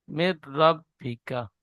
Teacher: নুন সাকিনের পরে ইয়ার মালুনের 6টি অক্ষরের মধ্যে র এসেছে, তাই নুন সাকিনকে বিনা গুন্নায় মিলিয়ে পড়তে হয়, একে ইদগামে তাম বলে।